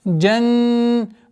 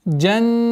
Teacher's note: Удержание назализации в размере двух огласовок над буквой нун. Джаннатан.